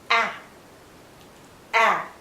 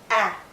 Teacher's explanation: Our lips are still spread, but this is the most open vowel in this group.